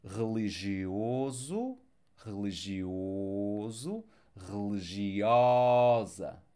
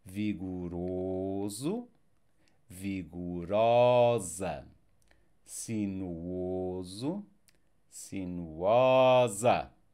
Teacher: if it is the feminine, if we go with the A at the end, the O sound will open up